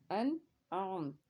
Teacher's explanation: आगे है आइन, आइन हुर्फ़ हल्की का हर्फ है और हल्क के दरमियान से इसको अदा करते हैं